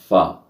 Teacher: ये ऊपर वाले बड़े सनाउलिया के दांत निचले होंठ पर लगेंगे तो फ़ा अदा होगा होंठों से।